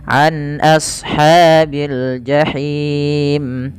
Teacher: Lafal him ini kita boleh membacanya dengan 2 harokat, 4 harokat atau 6 harokat. Karena kita wakaf pada lafal mim yang awalnya berharokat dimatikan dan itu kita hukumi dengan mad arid disukun.